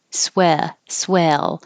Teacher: Your jaw is a little more open, and your tongue is more flat.